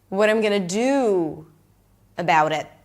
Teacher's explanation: I have the time to linger on the do